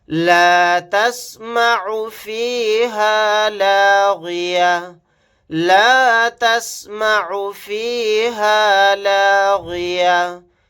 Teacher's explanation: یہاں پر عین کو اچھے سے حلق سے نکال کر ادا کریں گے